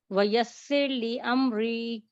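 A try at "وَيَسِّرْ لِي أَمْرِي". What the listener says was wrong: امری را کو پر نہ کریں، یسر لی امری. ٹھیک ہے، را پر نہیں ہوگا، باقی ٹھیک پڑھا آپ نے ماشاءاللہ.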